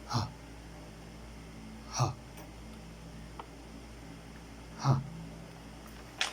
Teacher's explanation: According of voicing, it is voiceless. According of the place of articulation, it is glottal. Glottal. And according of the manner of articulation, it is fricative.